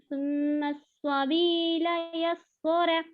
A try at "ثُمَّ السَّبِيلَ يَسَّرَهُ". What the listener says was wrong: دیکھیے یہاں پر سین کو دو سینوں کا بھی موٹا پڑ رہا ہے. ثم السبیل یسرہ صرف را کو موٹا پڑنا ہے.